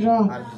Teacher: 10 নম্বর মাখরা জিহ্বা আগা পিঠ তার বরাবর উপরে তালুর সঙ্গে লাগাইয়া একটি হরফ উচ্চারিত হয়